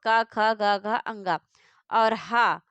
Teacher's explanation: ये सभी जो हैं वो कंठ से उच्चारित होते हैं। इन्हें कंठ ध्वनियां कहा जाता है।